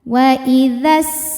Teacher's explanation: Dzal fathah tanpa alif berarti dzalnya pendek kalau wasal ya. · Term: takhallus bil hadfi